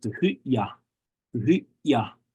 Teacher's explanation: Some other dialects pronounce it Tuhuya, Tuhuya. So there's no ch or d, it's just a ya, Tuhuya.